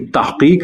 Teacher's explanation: تے کو زیر مجہول کے ساتھ پڑھا اور بولا جائے گا تو اس کا اردو تلفظ درست ہوگا، یعنی تحقیق نہیں تحقیق۔